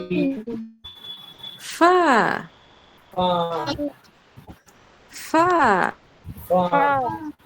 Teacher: ফা বলার সময় কিন্তু দুই ঠোঁট মিলবে না, উপরের দাঁতের আগা আর নিচের ঠোঁট এই দুইটা মিলবে, দুই ঠোঁট কিন্তু মিলবে না, একদম মনে রাখতে হবে।